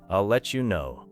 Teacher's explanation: Notice how let you may sound like letcha.